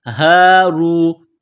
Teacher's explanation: نکالنے کی طرح اس کو پڑھیں گے، ہ الف زبر ہ، را واو پیش رو، را کو موٹا کرنا ہے